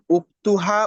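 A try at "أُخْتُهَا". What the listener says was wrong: উক্তিহা না পেশ পেশ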